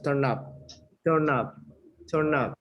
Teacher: La N se junta con la U, ¿verdad? La U se pronuncia como entre A y A, eso es turn up.